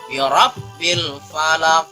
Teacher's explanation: Ketika kita memberhentikan huruf qaf atau ayat yang pertama di dalam surah Al-Falaq, maka huruf qaf adalah huruf qalqalah. Huruf qalqalah berarti huruf tersebut harus dipantulkan.